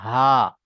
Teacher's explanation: ছোট হা উচ্চারিত হয় কন্ঠনালীর শুরু অংশ অর্থাৎ এই বুকের দিকে অংশ